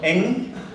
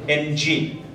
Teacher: In the north, it is pronounced as the velar nasal stop eng, whereas in the south, the English letters representing the sounds are pronounced separately as in ng.